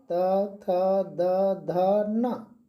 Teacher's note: आपका जीभ का अगला भाग, टंग का अगला भाग दांत को टच करता है। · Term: दंत्य व्यंजन